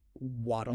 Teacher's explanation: the T in waddle is between vowel sounds, unstressed context. So it flaps. Waddle becomes waddle. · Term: flap D